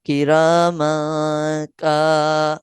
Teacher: اس کے بعد میم تنوین کا قاعدہ لگ رہا ہے، تنوین کے قاعدے میں اخفا ہے، کیونکہ اخفا حروف اخفا آ رہا ہے فوراً بعد، تو لہٰذا ہم غنہ کر کے پڑھیں گے کرام کا۔ اب اس کے فوراً بعد دیکھیں کہ کاف الف کا جو ہے وہ ساتھ ہی حروف مدہ آ گیا، الف مدہ، حروف مدہ میں سے الف مدہ آ گیا، تو لہٰذا یہ بھی لمبا ہو جائے گا۔